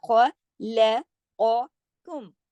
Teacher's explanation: پھر دیکھیے ربکم الذی، را موٹا پڑھا جائے گا، تشدید ہے، با سے سختی سے جوڑا جائے گا، اور ربکم الذی خلقکم، خواہ موٹا پڑھا جائے گا، اور قوف، اب دیکھیے خواہ کے موٹا کرنے میں آپ نے لام کو موٹا نہیں کر دینا